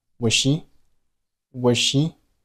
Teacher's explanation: 结尾的 z 不发音，这是因为 z 是一个浊辅音，而后面 she 开头的 sh 是一个清辅音